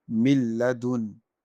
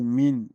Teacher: if after noon sakin or tanwin, the letter lam or ra appears, then we have to join the letters and we are not going to make the ghunnah. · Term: idgham without ghunnah